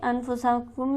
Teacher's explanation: انفسکم میں نون ہمارے پاس ساکن ہے اور اس کے بعد حرف ہلکی بھی موجود نہیں، تو لہٰذا اسے ہم غنہ سے پڑھیں گے. کم پر ہم کم کے میم پر ہم غنہ کریں گے کیونکہ میم ساکن کے بعد ہمارے پاس با موجود ہے.